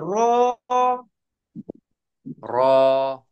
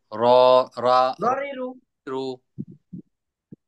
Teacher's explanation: র বললে জিহ্বার আগার পিঠটা খালি উপরের দিকে লাগবে র র হ্যাঁ জিহ্বার আগার পিঠ তার বরাবর উপরে তালুর সঙ্গে